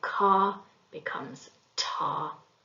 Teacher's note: a k or a g is produced further forward in the mouth towards the front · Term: fronting